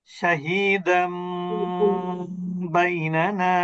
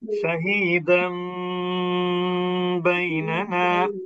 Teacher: ওই নুন সাকিনের উচ্চারণটা মিম সাকিনের উচ্চারণ করতে হবে, অর্থাৎ নুনটা মিম দ্বারা পরিবর্তিত হবে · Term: ইকলাব